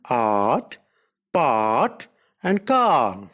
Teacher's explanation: A is a back open unrounded vowel.